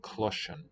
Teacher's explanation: Palatalizes, we say it shifts the S to a sh.